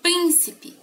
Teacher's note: sílaba tônica prim ela é uma palavra proparoxítona